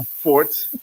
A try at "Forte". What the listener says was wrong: Forte, you gotta put the Tay on there. Forte.